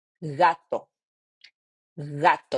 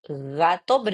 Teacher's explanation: You see the sounds comes from the throat like gato, but it's super soft.